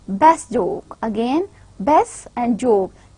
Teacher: Again, best and joke. Ta sound is elided under the reaction of ja sound.